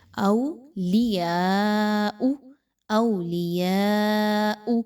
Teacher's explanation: والذین آووا ونصروا اولئک بعضهم، نیکسٹ دیکھیے تو اولیاء بعض، اولیاء بعض، یہاں پہ دیکھیں تو یا کے اوپر مد موجود ہے، اور او کی حرکت کو بہت سے لوگ کلیئر نہیں پڑھتے، اس کو بہت سے لوگ مجہول پڑھتے ہیں، اولیاء، یہ غلط ہے، اولیاء، اولیاء، کلیئر پڑھیے۔